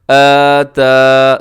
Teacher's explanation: دونوں کے اوپر کھڑی زبریں ہیں، دونوں کو برابر برابر لمبا کیجیے گا